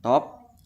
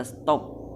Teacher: Dalam kata bahasa Inggris top diucapkan top dengan T apikodental, tetapi setelah mendapat tambahan kata S diucapkan menjadi kata stop dengan T juga laminopalatal. Dengan demikian dapat disimpulkan bahwa T pada kata stop disesuaikan atau diasimilaskan artikulasinya dengan S yang mendahulinya sehingga sama-sama laminopalatal.